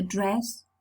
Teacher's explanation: Then for the dress, the front of the tongue is in mid position, neither high nor low.